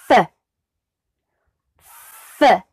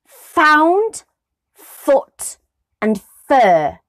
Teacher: it is the top of the bottom lip and the teeth so the teeth go down and rest on that bottom lip creating that block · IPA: /f/